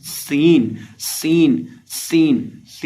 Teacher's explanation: सीन के अंदर हमने सीटी की आवाज पैदा करनी है